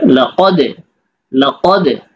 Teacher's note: জজম পাওয়া গেলে কলকলা করতে হয়, একটু ঝাম্পিং হয়, একটু প্রতিধ্বনি হয়।